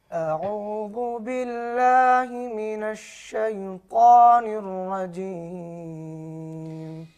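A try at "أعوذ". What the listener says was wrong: اعوذ اور اعوذ اس کو موٹا نہیں پڑھا جائے گا، ذال وال نہیں ہے، ذال اس کو باریک بھی پڑھیں گے اور نرم بھی پڑھیں گے۔ دوبارہ پڑھیے۔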